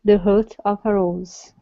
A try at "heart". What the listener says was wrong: Okay, now this word here is pronounced heart instead of hut. Open up your mouth. Heart.